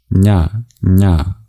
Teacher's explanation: The palatal nasal, nya, nya, produced in the same place as cha and ja.